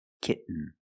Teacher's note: the T makes a different sound we have to make a stop T and Link it to the N · You do the stop T, kit. You don't release, and then you fall to an N, kitten. When you make the stop T, the tongue is up, almost in the N position, so you don't have to change much.